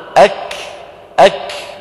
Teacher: انظروا إلى اللوحة، تابعت صوت الكاف طريقه إلى الخارج. إذن جريان النفس بعد انحباسه في المخرج عند النطق بالحرف الشديد المهموس.